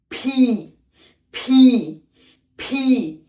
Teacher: দুই ঠোঁট ভালো করে লাগিয়ে তারপরে সজোরে বাতাস ছাড়তে হবে